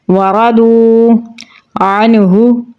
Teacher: را کو پر یعنی موٹا پڑھیں گے. ضاد کو بھی پر یعنی موٹا پڑھیں گے اور واو کے ساتھ ملائیں گے. واو حروف مدہ میں سے ہے تو 1 الف کے برابر لمبا پڑھیں گے.